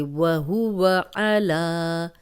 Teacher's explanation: لام پہ کھڑی زبر ہے اور اس کو دو حرکات لمبا کریں گے